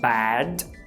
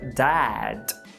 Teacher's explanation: Isso quer dizer que você precisa deixar o queixo cair. Você precisa pensar que vai falar o A do português, mas depois que o seu queixo já estiver caído, você vai lá e mete um E. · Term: ash